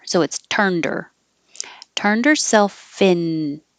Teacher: Turned her will connect, and you can get rid of the H in her